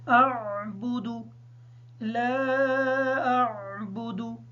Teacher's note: لام کی مد کو مکمل کریں گے، حمزہ اور عین کو کلیئر کر کے پڑھیں گے کیونکہ یہ ہم آواز حروف ہیں، اکثر یہ مکس ہو جاتے ہیں۔